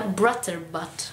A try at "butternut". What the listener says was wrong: Butternut. No, no, butterbutt. Butternut. Con la n, no.